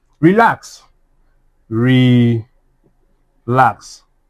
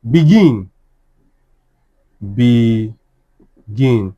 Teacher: The stress is what? On the second syllable.